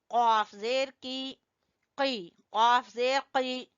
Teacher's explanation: कॉफ जबान की जड़ से